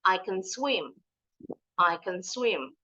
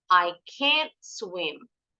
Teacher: Tapi kalau tidak bisa, bunyinya A-nya, vokalnya lebih panjang sedikit.